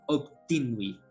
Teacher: a doutrina exige efetivamente como segunda letra um B, mas os ouvidos ouvem mais um P